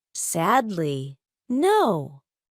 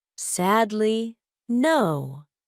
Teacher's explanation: I have sad and no. Those are my stressed syllables · The first syllable is stressed, and the third syllable is stressed.